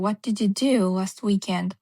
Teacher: I'm putting emphasis on do. My voice is like louder when I say do. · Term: sentence stress